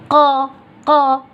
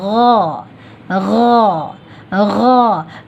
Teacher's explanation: ان 3 حروف میں ہم زبان کے آخری حصے کو تو اٹھاتے ہیں لیکن اطباق نہیں کرتے، یعنی اس کو چپکاتے نہیں ہیں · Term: استعلا